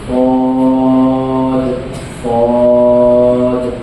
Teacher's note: نوک زبان اوپر نیچے کے دانتوں سے مل کر صاد ادا ہوتا ہے